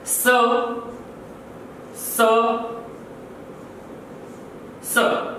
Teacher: तीनों सकार भी किस प्रकार के वर्ण हैं? तो अघोष ध्वनियां हैं या अघोष वर्ण हैं।